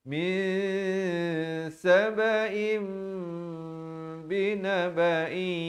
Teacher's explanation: ditukarkan daripada bunyi nun kepada bunyi mim, daripada sabain kepada sabaim. Ya? Tapi bibir sekadar bersentuhan atau hampir bersentuhan. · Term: iqlab